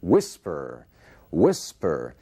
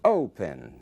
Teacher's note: Você vê que a força da palavra, a sílaba tônica, está na primeira parte.